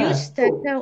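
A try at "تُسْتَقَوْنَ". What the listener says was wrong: Hurufnya tu. Antum tadi belum benar.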